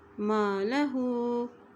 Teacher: अब हा के ऊपर उल्टा पेश है इसको एक हरकत लंबा पढ़ेंगे